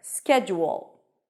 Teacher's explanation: When you connect the ju and the o, you get like a small W sound there.